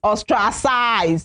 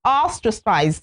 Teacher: So the stress is on the first syllable.